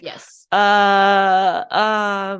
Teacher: those are very much just like relaxed mouth open vowels. They're so they're the default vowels.